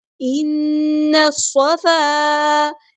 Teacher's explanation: ساتھ ملا دینا ہے، حمزۃ الوصل ہمارا ڈراپ ہو جائے گا، لام یہاں پہ لام شمسی ہے، اس کو ہم ظاہر نہیں کریں گے ، صاد ہمارا ہیویٹر ہے، پورا ادا کریں گے، الف مد